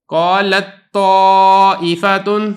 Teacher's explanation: جو تا ہے اس کی کوئی صفت باقی نہیں رہی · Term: ادغام تام